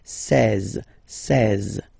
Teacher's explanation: E and E together, they give you the sound E, really open